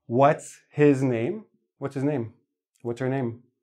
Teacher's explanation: H's, you will very often miss an H when you're listening to native speakers because it's a soft sound that gets lost in the flow.